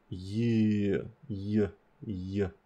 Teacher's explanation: we can just try to hold that sound, y. That is definitely a continuant.